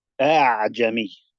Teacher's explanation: with the first hamza, it came from the vocal cords with tahqiq, and it was a sharp opening and closing of the vocal cords. And I close it straight away.